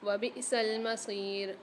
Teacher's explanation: حمزہ کے اوپر سکون آ رہا ہے تو یہاں پر جھٹکا دے کے پڑھیں گے، اسقاط کے ساتھ یہ ساکن ہے، ایک الف میں دار کھینچ کے پڑھیں گے۔